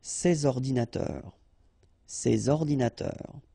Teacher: so you should make the liaison between S and O